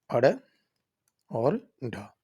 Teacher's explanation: जिसके उच्चारण में जो जीभ है वो मूर्धा को छूकर नीचे गिरती है